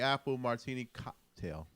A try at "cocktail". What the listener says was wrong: No, because you still emphasizing on that cock.